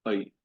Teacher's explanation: ऐ, अ, जैसे अ और ई एक साथ आप रख दें तो ऐ